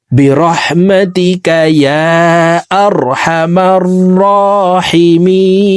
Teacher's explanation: রর উপরে খাড়া জবর দিয়ে এই র হরফকে এক আলিফ টেনে পড়বো।